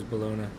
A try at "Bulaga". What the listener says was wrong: But there's no N. There's no N in it, Bulaga. Bulaga.